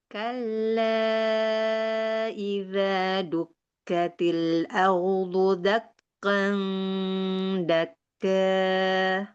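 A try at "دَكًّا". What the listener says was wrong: Nah, yang kannya yang pertama agak tebal. Dakkan, jangan dakkan. Nah, dakkan.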